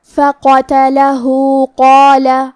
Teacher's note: کلمت قال میں قاف کو اور اس کے بعد مد الف کو دونوں کو تفخیم سے مطلب موٹی آواز میں پڑھیں گے · پہ الٹا پیش ہے تو یہاں حکم ہے مد صلہ صغرا. ہم اپنی آواز 2 مد کے برابر لمبی کریں گے